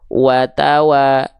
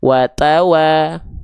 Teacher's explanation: huruf ta itu punya sifat hams, tapi kadarnya bukan mengalir nafas, tapi hanya berupa percikan-percikan nafas saja